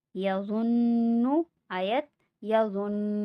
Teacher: نون مشدد پہ غنہ ہوگا